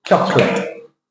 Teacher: the O disappears the vowel goes away